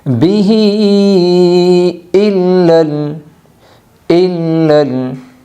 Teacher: یہاں پر مد منفصل ہوگا، اس لیے ہا کو لمایا جائے گا۔